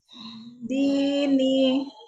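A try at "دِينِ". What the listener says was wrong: Dipanjangin dulu. Dini, 2 harakat yuk. Dini, turunkan.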